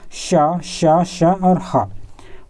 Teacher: जिसके उच्चारण एक ही प्रकार के रगड़ या घर्षण से उत्पन्न होता है उसे हम उष्म कहते हैं